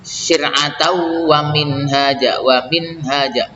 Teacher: Syir'atan wa minhaja itu dibaca idgham bi gunnah syir'atau, tidak dibaca syir'atan ya. Syir'atau wa minhaja, wa minhaja, minnya dibaca idhar halqi karena bertemu dengan ha, minha.